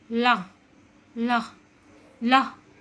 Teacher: पार्श्विक होता है हवा जीभ के दोनों ओर से बाहर निकलती है, उन्हें पार्श्विक व्यंजन कहते हैं।